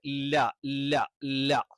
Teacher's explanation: ലാമിന്റെ മഖ്റജ് നാവിന്റെ അറ്റം അല്ലെങ്കിൽ നാവിന്റെ മുകളിലത്തെ ആ അറ്റം അത് മുൻപല്ലിന്റെ ഊന് ആ ഒരു മേഖലയിൽ തട്ടിച്ചുകൊണ്ടാണ്